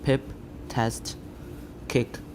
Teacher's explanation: PTK are aspirated when they are syllable initial, as in words such as pip, test, kick